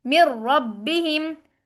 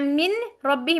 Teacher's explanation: नून को साथ मुदगम कर दिया और एक शिद्दत के साथ पढ़ा है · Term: इदगाम